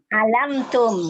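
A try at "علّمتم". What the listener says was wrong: Lamnya tasydid.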